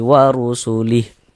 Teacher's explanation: Kemudian dia di tengah bacaan kita seperti ini ya. Maka huruf ra-nya itu dibaca tebal, dibaca tafkhim